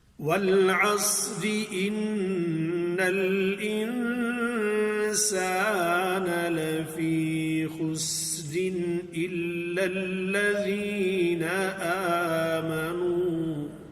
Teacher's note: اگر اس کو آگے ملا کے پڑھ رہے ہیں وہاں وقف نہیں کر رہے تو را کو باریک پڑھیں گے